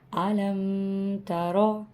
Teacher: را کو ہم نے موٹا پڑھا کیونکہ را پہ زبر ہے